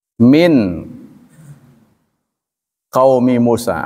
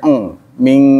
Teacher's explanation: Min nun mati dari sisi tajwid ya, bertemu dengan qaf itu namanya ikhfa ab'ad, bacanya eng, ming ya. Jadi kalau ketemu dengan qaf dan kaf itu ciri ikhfa ab'ad, ikhfa jauh.